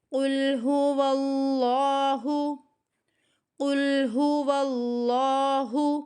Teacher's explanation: واو کو لام کے ساتھ ملاتے ہوئے اللہ کے لفظ لام کو ہمیں موٹا پڑھنا ہے، کیونکہ جب بھی اللہ کے اس لام سے پہلے زبر یا پیش ہوگی تو موٹا پڑھا جائے گا، زیر کی حالت میں ہمیں ہمیشہ باریک پڑھنا ہے۔